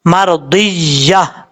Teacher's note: اب اس کے بعد یا کے بعد 2 زبر ہے تا کے اوپر، اگر آپ ملا کے پڑھیں گے تو مرضیۃً فادخلی پڑھا جائے گا، لیکن آپ یہاں پہ سٹاپ کریں گے تو وقف کرنے کی صورت میں یہاں پر تا کو ہا سے بدل کر پڑھیں گے